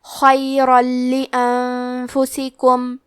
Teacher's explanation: تو ہم تنوین کو لام میں ملا کے بغیر غنہ سے لیکن تشدید کے ساتھ یہ حکم کو ادا کریں گے